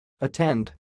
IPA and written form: əˈtɛnd (attend)